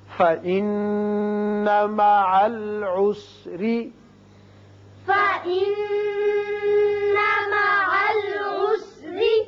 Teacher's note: نون مشدد ہے، غنہ کریں گے اور یہاں را کے نیچے زیر ہے، را باریک پڑا جائے گا